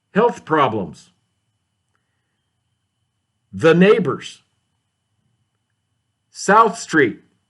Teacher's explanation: when the th is at the end of the word at least in most words you don't push as much air out of your mouth as you do when it's at the beginning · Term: voiceless th